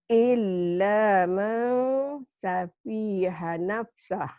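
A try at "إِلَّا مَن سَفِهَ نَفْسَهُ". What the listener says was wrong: Pendek. Illa ma safiha nafsah.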